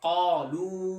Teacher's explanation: زبان کی جڑ جو تالو کا جو نرم حصہ ہے وہاں کو جب لگے گی تو موٹا قاف ادا ہوگا